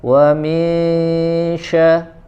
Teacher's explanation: yang dia ada tambahan gunah ya di bacaan Ikhfa wa minya Ya ditahan ada tambahan ghunah di situ